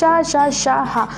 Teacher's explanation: जो ऊष्म व्यंजन होता है उन्हें आप बोलेंगे घर्षण व रगड़ कर बोला जाता है। जो जैसे जब आप घर्षण द्वारा बोलते हैं, जैसे आप कोई शब्द बोल रहे हैं वो घड़घड़ाहट से निकल रही है, घर्षण करके निकल रही है, तो आप उसको बोलेंगे ऊष्म व्यंजन।